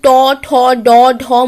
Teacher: এই বর্ণগুলি উচ্চারণ করার সময় আমাদের জিভের সামনের অংশ তালুকে স্পর্শ করে শ্বাসবায়ুকে বাধা দেয় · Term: মূর্ধন্য বর্ণ